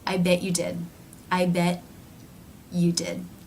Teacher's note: rather than releasing air through the teeth, the mouth simply moves in to the next sound, which is the U as in few diphthong.